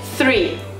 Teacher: o erro que o brasileiro faz normalmente é confundir com o som de t. Então não é tree, é three.